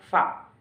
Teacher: Jadi atau al-aswat asy-syafawiyah al-asnaniyah. Jadi labiodental itu keluarnya huruf dari gigi atas dan bibir bawah